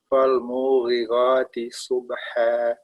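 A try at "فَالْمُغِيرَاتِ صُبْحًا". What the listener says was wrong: Ya, tadi munya jangan panjang-panjang. Fal-mughirati subha.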